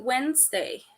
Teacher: pronunciated Wednesday so where the first D is silent